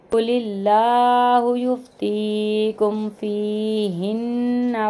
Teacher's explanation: वयस्तफ्तूनका फिन्निसा, क़ाफ़ को जो है मोटा पढ़ेंगे यहाँ पे और अल्लाह के नाम को बारीक पढ़ेंगे